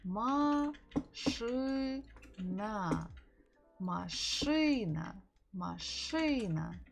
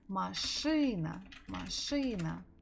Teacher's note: So we stress буква И.